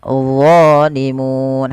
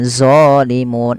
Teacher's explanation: dia mirip dengan dalal tapi pangkal lidahnya terangkat dan dia punya sifat e namanya idbaq melekat ke langit-langit